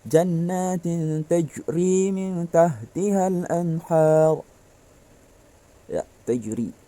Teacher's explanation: Maka cara bacanya qalqalah adalah dipantulkan. Ketika dibaca jannatin tajri min tahtihal anhar, ya, tajri, memantulkan.